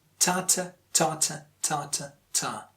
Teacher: So a good English rhythm is like ta-ta, ta-ta, ta-ta, ta. Ta the stressed and t the unstressed, and again stressed, ta, and then unstressed, t. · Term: stress-timed language